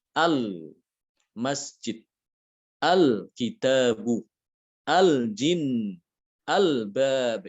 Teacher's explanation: Yang pertama adalah dibaca idhar. Ya, jadi lamnya itu, lam sukunnya itu harus dibaca dengan jelas. Al-masjid, al-kitabu, al-jin, al-bab.